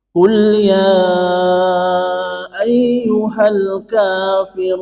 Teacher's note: Maka yang awalnya mad tabi'i berubah menjadi mad arid lis-sukun. Panjangnya berapa? Antara 4 sampai dengan 6 ketukan.